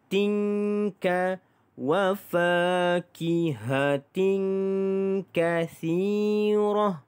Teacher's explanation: di sini tanwin bertemu dengan huruf kaf, maka kita dengungkan dua harakat ikhfa hakiki. Tinka wa fakihatin kasirah.